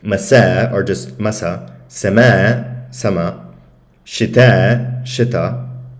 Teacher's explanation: not only that the final vowel is shortened because the hamza is removed, but then because of that, the stress shifts to the first syllable